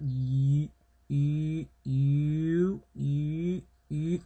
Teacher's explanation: it's basically from the transition of an I to an U sound